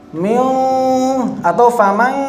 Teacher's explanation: mengalirkan suara ke rongga hidung seluruhnya saat idgham naqis. Jadi ya dan wawnya malah nggak kelihatan sama sekali